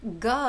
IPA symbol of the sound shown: g